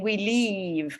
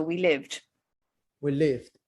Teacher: don't make the sound like an E, make the sound like a short I, live, and make sure you put the D as well.